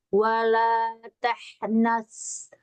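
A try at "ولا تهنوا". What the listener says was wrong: Kenapa jadi sofir lagi? Ayo lagi, nggak boleh sofir. Ya, dia di atas. Wala tahnas. Ya, tapi jangan jadi di bawah, jadi sofir dia. Kalau sofir lebih nyaring bunyinya.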